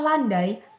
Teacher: bunyi ai pada kata landai, sonoritasnya terletak pada unsur pertama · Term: diftong turun